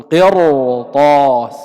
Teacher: لاحظ الكلمة الأولى قرطاس، هذه راء ساكنة قبلها كسر، وهذا من أسباب الترقيق لأنه كسر أصلي متصل بالكلمة بالراء، لكن وقع بعد الراء حرف استعلاء مفتوح في نفس الكلمة ففخمت الراء. نقول قرطاس بلا خلاف بين القراء.